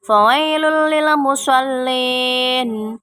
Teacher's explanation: tanwin dimasukkan ke huruf lam dan dibaca tidak berdengung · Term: idgham bila gunnah